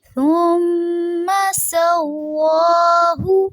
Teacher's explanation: ثم میں جو میم ہے اس کی زبر کو لمبا نہیں کرنا اور میم پہ غنہ ہو رہا ہے، ناک میں آواز لے کے جائیں گے